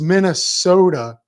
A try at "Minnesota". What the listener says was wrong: Soda. So instead of sota, it's soda.